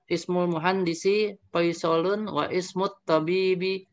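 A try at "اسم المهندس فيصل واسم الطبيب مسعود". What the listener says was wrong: bukan wa ismu, bukan wa ismu. Alifnya tidak terbaca, itu kan alif wasal ya. Nah, wasmu, moga diulang lagi ya.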